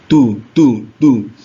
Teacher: kan agak keluar sedikit ujung lidah bertemu dengan gigi atas auu kalau Dal itu ujung lidah bertemu dengan pangkal gigi atau Pangkal gigi seri atas atau gusi